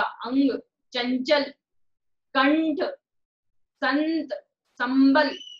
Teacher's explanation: जिस वर्ण पर अनुस्वार लगा उसके बाद जिस वर्ग का व्यंजन उसके पंचम वर्ण का उच्चारण होता है।